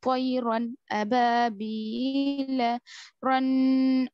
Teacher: नून की आवाज को जाहिर करेंगे, करना जल्दी। पढ़ेंगे बिला गुन्ने के, गुन्ना नहीं करेंगे, जल्दी पढ़ेंगे, जाहिर करेंगे, और वहां पर रुकेंगे भी नहीं। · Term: इजहार